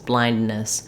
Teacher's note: it's more just like one N, one long N that connects